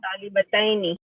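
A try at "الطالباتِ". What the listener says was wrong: No, not talibataini, at-talibati. Kasra. Yeah, at-talibati.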